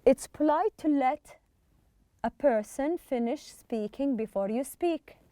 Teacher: Try to make the to and the verb, the infinitive, as one word